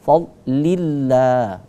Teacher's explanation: Ini lafaz jalalanya kata Allah itu dibaca tipis, tarqiq. Karena sebelum lafaz Allah itu ada huruf berbaris kasrah.